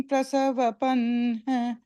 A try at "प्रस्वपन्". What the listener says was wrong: second time, the third line, last word, it's press is the sound, praswapan. said prasava, so it becomes the chandas got lost.